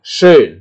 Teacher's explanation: Sedangkan O itu adalah campuran antara O dan I ya